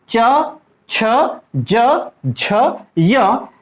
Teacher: इसका उच्चारण स्थल तालु से होता है, इसलिए इन्हें हम बोलते हैं तालव्य। इन 5 वर्णों को हम बोलेंगे तालव्य, जो कि कंठ से थोड़ा आगे।